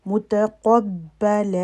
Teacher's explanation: لم متقب، قب با کے اوپر شد ہے تو اس کے اندر سکون ہوتا ہے، قلقلی کی آواز آئے گی. متقبل، قاف ہیوی، باقی کوئی بھی حرف موٹا نہیں، ہیوی نہیں، باریک پڑھیں گے.